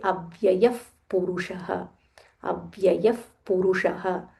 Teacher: So Visarga is followed by pa. So when we join, we say Avyayaf Purushaha.